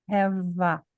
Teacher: na verdade, a minha palavra acabou no V, eu junto o V com A.